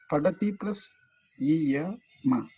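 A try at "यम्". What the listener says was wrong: It's not ma. This is not ma. This is pure consonant. Ma is makara plus akara, that is ma. It is, how do you say, pronounce this? Yam.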